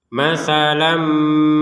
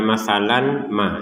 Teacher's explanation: tanwin bertemu mim apa yang sama dimasukkan disertai dengung dengungan